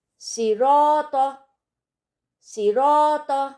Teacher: स्वाद को मोटा पढ़ा जाएगा और र को भी मोटा पढ़ा जाएगा